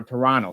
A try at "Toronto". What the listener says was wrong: You don't pronounce the T at the end. Toronto. No, it's not Toronto.